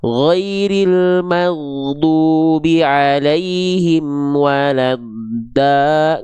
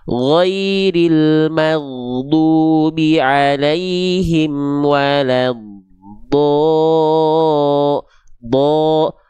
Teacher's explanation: Karena dia termasuk ke dalam huruf yang tebal, dia akan terdengar seperti vokal O.